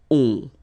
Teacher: Okay, and then the ending for il, elle will be ont. You don't pronounce the final t, so you get the nasal on.